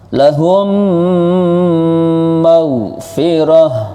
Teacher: Mim sukun bertemu mim namanya idgham syafawi. Cara bacanya lebur dan dengung.